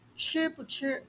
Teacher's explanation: When 不 is used between reduplicated words, it is pronounced in a neutral tone.